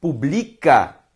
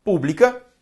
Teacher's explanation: Pela sílaba tônica. Publica, paroxítona. Pública, proparoxítona.